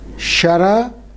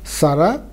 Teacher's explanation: the palatal changes to alveolar